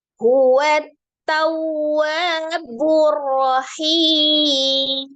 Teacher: Langsung ditasdid ke huruf ta. Ta sifatnya adalah siddah. Jadi suaranya tertahan. Waw tasdid dinabarkan.